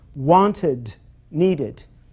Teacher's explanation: Those words, wanted and needed, end with a sound id, almost as if there was an ID on the end. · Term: extra syllable, id